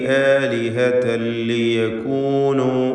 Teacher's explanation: ആലിഹതൻ എന്നതിലെ തൻവീൻ ശേഷം ലാമു വന്നതുകൊണ്ട് ഇദ്ഗാം ബിഗൈരി ഗുന്ന കാമിൽ നൽകി പൂർണ്ണമായും ലാമിൽ ലയിപ്പിച്ച് മണിക്കാതെ ഉച്ചരിക്കണം